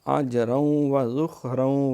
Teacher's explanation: ذخ سیٹی نہیں مارنی، ذخ خا میں خراٹا ہوتا ہے